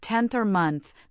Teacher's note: the tongue anticipates the upcoming th sound and the n is produced with the tongue tip against or near the teeth, not the alvear ridge. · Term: dental N